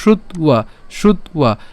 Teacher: অন্তস্থ বয়ের উচ্চারণ কার মতো হবে, উয়োর মতো হবে, তাহলে উয়ো, এবং তার সাথে কি আছে, আকার আছে, তাহলে উয়া, তাহলে শ্রুত্বা, খেয়াল করুন, শ্রুত্বা, শ্রুত্বা।